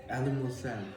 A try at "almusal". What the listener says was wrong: There's no ali. Almusal. Almusal. Paluktat yung dila mo.